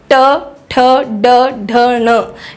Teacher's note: ट ठ ड ढ ण में आपकी जो जीभ है वो ऊपर रोल होके ऊपर लगती है